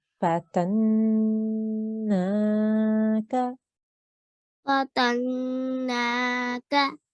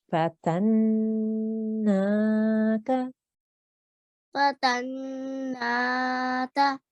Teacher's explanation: So first we're holding on the noon gunna, making a 2 second sound, nasal sound, and then we elongate for 2 seconds because of the vertical fatha.